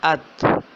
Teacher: جہاں اس کی حرف کی آواز ٹھہر رہی ہے، یعنی کہ زبان کی نوک جو ہے وہ اوپر والے اگلے 2 دانتوں کی جڑ سے لگ رہی ہے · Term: تا